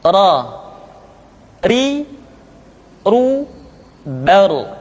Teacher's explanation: Berikutnya adalah huruf ra. Diucapkan dengan menyentuhkan punggung lidah dengan langit-langit.